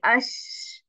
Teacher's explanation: ये शीन को पढ़ें तो तफशी भी आती है आपकी और आपको एयर सुनाई दे रही है